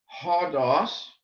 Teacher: H-O-D-O-S, hodos, because this initial sound has a hard breathing. If we have a soft breathing, if it were odos, and the breathing mark went this way, then we would leave off the H, and it would simply be odos.